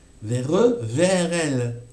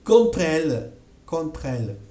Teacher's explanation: hago el sonido francés, R, que juntamos con E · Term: liaison naturelle